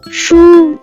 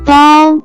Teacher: First character is 书 pronounce with first tone,